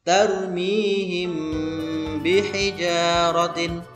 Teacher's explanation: Himpi mim mati bertemu dengan ba, maka hukum bacaannya adalah ikhfa syafawi. Maka huruf mimnya dibaca dengan samar-samar disertai dengan dengung